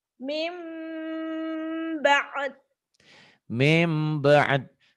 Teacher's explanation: nun mati atau tanwin ketemu ba. Ini iklab. Bunyi nun matinya jadi M. Min jadi mim.